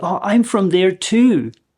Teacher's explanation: This version of too never gets reduced, but it can be extended a little bit if you want to stress something.